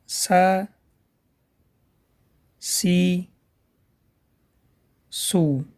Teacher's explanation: «Син» произносят, дотрагивая с кончиком языка середины нижних резцов. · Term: буква «син»